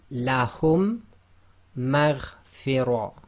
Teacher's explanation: they're applying this idgham, so they're assimilating the 2 mims together